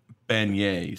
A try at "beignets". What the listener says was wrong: No, you said bidets. Bidets are different than beignets.